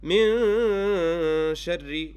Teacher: There is a noon sakinah. I didn't pronounce it. I put up غُنَّة in its place. And after is the letter sheen. · Therefore, ikhfa means to hide. I must hide this noon sakinah and replace it with a غُنَّة and go as close as possible to the sheen without touching the sheen and neither touching the noon.